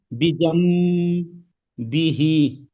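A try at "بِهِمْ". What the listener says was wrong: বিহি কেন হচ্ছে বিহিম?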